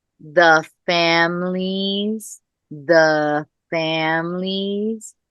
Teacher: just remembering to pull that short A back